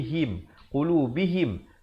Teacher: Seakan-akan ha baris bawah bunyi he.